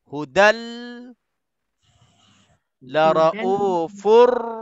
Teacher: maka nun mati yang ada pada tanwin itu hilang terus, masuk ke dalam lam, masuk ke dalam ra. · Langsung tak ada kesan ataupun tak ada saki-baki dari nun mati ataupun tanwin. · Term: idgham bila gunnah